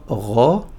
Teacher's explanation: un peu proche du R français, mais un peu plus loin dans la gorge